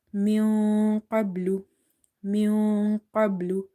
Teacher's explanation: Ba is sakin from the qalqala letters. So here will be echo or bouncing in the letter ba, but it will be weak qalqala